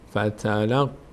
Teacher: فتحه روی قاف بعدش الف قرار گرفته، مد هم داره باید کشیده بشه. فتلقا قاف هم از حروف مستعلیه هست یعنی پر خونده میشه.